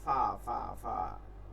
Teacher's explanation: নিচের ঠোঁটের পেট সামনের উপরে দুই দাঁতের আগার সঙ্গে লাগিয়ে